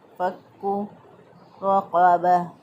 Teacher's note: रा को पुर पढ़ेंगे, रा को मोटा पढ़ेंगे, क्योंकि रा के बर ज़बर है।